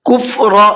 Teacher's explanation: را کو منہ بھر کے پڑھنا ہے اس لیے کہ را کے اوپر زبر ہے